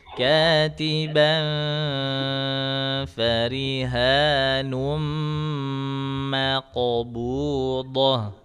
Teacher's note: Untuk qalqalahnya jangan berat-berat pantulnya